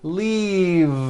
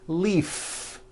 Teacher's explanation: and now at the ends of words glove alive and leave this last word leave is very different from the word Leaf like from a tree which has an unvoiced F the word is leave with a voiced V keep the voicing